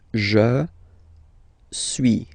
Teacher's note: suis, as you've been noticing, you don't pronounce the final S.